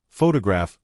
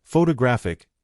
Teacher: photograph noun is stressed on the first syllable, but photographic adjective is stressed on the third.